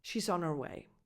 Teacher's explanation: the H of her gets reduced, it becomes softer, or again, if you speak fast, disappears completely